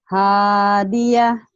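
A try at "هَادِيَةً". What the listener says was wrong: Ini gak ada hanya. Hadiah gitu Bu. Ayo Bu, ulang lagi.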